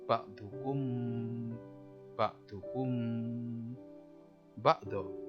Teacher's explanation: Ikhfa itu samar-samar, safawi di bibir. Jadi cara bacanya ya samar-samar di bibir antara mim dan ba. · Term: ikhfa safawi